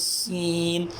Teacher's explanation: یہ سین، اس میں سیٹی کی آواز آنی چاہیے